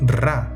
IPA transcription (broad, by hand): ra